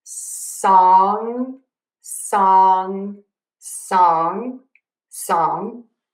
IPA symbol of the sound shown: sɔŋ